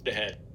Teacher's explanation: In between two vowels, H often becomes voiced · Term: voiced glottal fricative